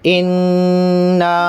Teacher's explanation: نون مشدد میں غنہ کریں گے ایک الف کے برابر